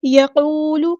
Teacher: واو مد آ گیا تو مد اصلی ہو رہی ہے، لام کی پیش کو لمبا نہیں کرنا